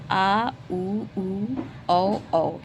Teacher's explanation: ये पश्च जिह्वा की स्थिति पीछे होती है तो पश्च स्वर कहलाते हैं